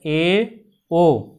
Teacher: मुख द्वार आधा बंद रहता है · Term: अर्ध संवृत